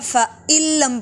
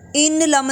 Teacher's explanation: حمزہ کو لام سے جوڑیں گے، نون بالکل ساکن ہوگا